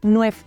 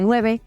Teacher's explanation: la e se perdía casi de forma sistemática a final de palabra